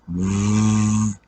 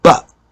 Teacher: V has a vibration and B is explosive